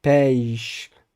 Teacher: da boca. Acontece, em alguns casos, o fenômeno da ditongação, porque você vai fazer uma transição de um som aberto médio, medial, e para i, para finalmente chegar à articulação do som sh